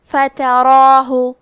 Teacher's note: ہمیں مد الف کو بھی بھاری آواز میں ادا کرنا ہے